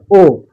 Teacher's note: जिनका उच्चारण करते समय हमारा मुख जो है संवृत स्वर से थोड़ा ज्यादा खुलता है